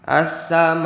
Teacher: Maka cara membacanya itu harus dipanjangkan 6 harokat karena ada mad tabi'i yang bertemu huruf hamzah dalam satu kalimat.